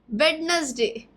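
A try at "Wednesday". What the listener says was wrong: वेडनेसडे नहीं, वेंसडे, जहाँ डी silent रहेगा, डी का उच्चारण नहीं होगा और एस नहीं, ज. वेंसडे.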